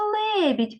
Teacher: Лебідь ділиться на два Склади і у другому складі є два м'яких приголосних